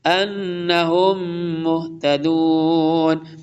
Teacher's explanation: میم ساکن کے بعد میم مشدد ہے، ادغام ہوگا